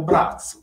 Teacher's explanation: esattamente con una pronuncia sorda di questa Z